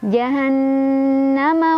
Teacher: ada gunnah karena ada nun yang bertasydid dibacanya berdengung ya